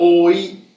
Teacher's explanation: That sound oi is considered a single phoneme, even though it's technically 2 of these.